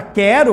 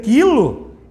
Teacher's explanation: se você pegar a palavra quero, por exemplo, aparece só o som do K. Ninguém vai dizer quero, não tem o som do U.